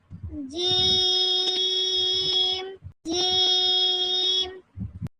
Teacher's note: और जीम को पांच काउंट लंबा करेंगे।